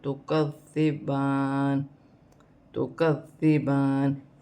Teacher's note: ذال کو کاف کے ساتھ ملا کے پڑھا جائے گا